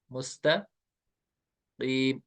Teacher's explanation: तो आपको ख्याल रखना है इस सीन को कैसे प्रोनाउंस करना है, विद विसल।